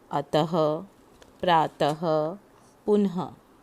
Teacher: इसे हम विसर्ग कहते हैं। इसका उच्चारण शब्द के अंत में होता है। इसकी ध्वनि है अह।